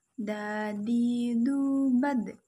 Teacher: Dalam keadaan mati, huruf da terdengar suaranya memantul, seperti dad